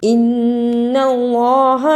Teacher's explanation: نون مشدد کو ادا کیا اور اللہ کو پر پڑھا۔